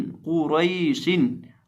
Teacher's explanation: इस लफ्ज़ के अंदर हम कौफ को भी और रॉ को भी दोनों को मोटा करके पढ़ेंगे